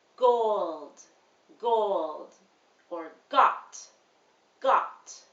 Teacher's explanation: g is voiced and will have more vibration in your vocal cords